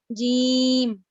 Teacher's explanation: جو جیم کا مخرج ہے وہ ہے وسط لسان بالمقابل، اوپر کا تالو. اب تالو میں نہ انہوں نے مینشن کیا ہے نرم، نہ انہوں نے مینشن کیا ہے سخت، تو یعنی آپ جہاں مرضی لگا سکتے ہیں.